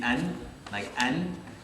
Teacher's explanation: The noon would be the most like forward anterior kind of sound.